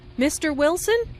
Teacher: Notice the rising intonation on Mr. Wilson, which is used to address someone.